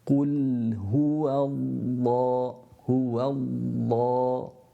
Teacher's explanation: So here we're pronouncing two lams, the first of which is a sukoon, so therefore the lips must go back to the makhaarij of the lam, and the lam is pronounced from the edge of the tongue, from canine to canine tooth almost. Your edge of the tongue goes up and touches the gums that are there.